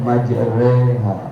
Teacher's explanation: Imalah ada di Quran itu di juz 12 di surat Hud ada kalimat wa qala rkabu fiha bismillahi majriha. Imam kita membaca majreha, itu namanya imalah, mencondongkan ke kasrah.